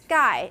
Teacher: long leg and in Sky you're not doing SK SK SK you're doing Sky it's a voiceless unaspirated K